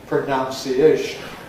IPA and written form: prəˌnaʊnsiˈeɪʃn (pronounciation)